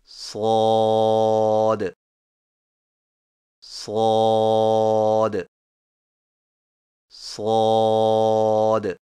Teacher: صاد کی ادائیگی میں زبان کی نوک کو سامنے والے نیچے کے دو دانتوں کے کناروں سے مضبوطی سے لگا کر اور زبان کے پچھلے حصے کو تالو کی طرف بلند کرتے ہوئے موٹی اور سیٹی جیسی آواز میں پڑھیں